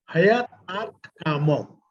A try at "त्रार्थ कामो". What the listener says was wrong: नहीं है, त्रा पढ़िए, त पढ़ रहे हैं आप त्रा को।